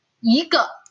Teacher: Kalau misalnya dia diikuti dengan suku kata nada keempat dan netral, maka kata i di sini yang nada pertama harus berubah menjadi nada kedua.